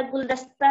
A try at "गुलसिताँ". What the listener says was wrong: गुलदस्ता बोल रही हो गुलिस्ता, गुलदस्ता बोल रही हो, गुलिस्ता बोलिए, गुलिस्ता माता, देखिए गा पे छोटा की मात्रा गु, ला पर छोटी मात्रा ली, गुली आधा सा है, अट्टा है, ता पे चार बिंदी है, गुलिस्ता,